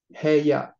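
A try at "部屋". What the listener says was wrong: Perfect. Hey, yeah. Nice.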